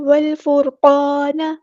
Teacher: بھی ہم پورا ادا کریں گے، والفرقا، کا نہیں کرنا، والفرقان، نون کی زبر کو لمبا نہیں کرنا، حرکات کو لمبا نہیں کرتے